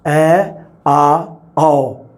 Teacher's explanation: ਐ, ਆ ਤੇ ਔ, ਐ, ਆ, ਔ, ਇਹਨਾਂ ਤਿੰਨਾਂ ਸਥਿਤੀਆਂ ਦੇ ਵਿੱਚ ਜੀਭ ਦੀ ਸਥਿਤੀ ਜਮਾਂ ਨੀਵੀਂ ਜਾਂ ਲੇਟਵੀਂ ਹੁੰਦੀ ਹੈ ਬਿਲਕੁਲ। ਇਸੇ ਕਰਕੇ ਇਸ ਨੂੰ ਨੀਵੇਂ ਸਵਰ ਜਾਂ ਖੁੱਲੇ ਸਵਰ ਕਿਹਾ ਜਾਂਦਾ।